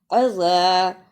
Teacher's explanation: عین پر زبر، اسے جلدی پڑھنا، زال پر زبر لیکن الف مدہ ہے، اس لیے اسے تھوڑا سا لمبا کرنا